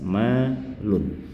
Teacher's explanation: bunyi asal tanwin nun itu berakhiran bunyi n yang jelas